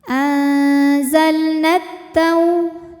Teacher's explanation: karena alif lam menghadapi huruf Syamsiyah yaitu huruf huruf Ta Maka alif lam tidak kita baca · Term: alif lam syamsiah